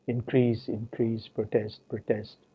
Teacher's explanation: in most varieties of indian english we find that this grammar sensitive difference between these two forms of a doublet is not maintained so the difference is not grammar sensitive both the forms are